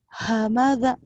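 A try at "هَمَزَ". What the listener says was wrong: ha, hamaza gitu, bukan hamada tuh hamaza, za. Kurang rapuh zainya.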